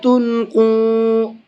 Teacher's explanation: قاف کو منہ بھر کے بھی پڑھیں گے اور تھوڑا سا کھینچ کر کے بھی پڑھیں گے۔ تھوڑا سا مطلب ایک الف کی برابر کھینچ کر کے پڑھیں گے، اس لیے کہ یہاں پر واو مدہ ہے۔